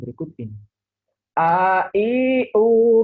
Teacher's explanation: huruf a makhraj nya dari tenggorokan yang terjauh di bagian bawah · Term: huruf hamzah